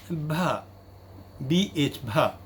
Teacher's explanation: It is bilabial. It is also voiced and aspirated.